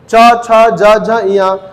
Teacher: ये हो जाएगा तालव्य व्यंजन, क्योंकि जीभ किसको छू रही है? तालु को छू रही है।